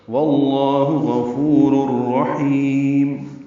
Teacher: ہا وسط حلق سے ادا ہوگا، اس کو لمبا کریں گے، میم ساکن پہ اظہار ہوگا۔